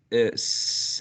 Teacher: the friction is created by the tongue being pressed against the alveolar Ridge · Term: alveolar fricative